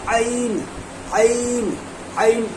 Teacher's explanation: बीच हलक से आइन और हा अदा होता है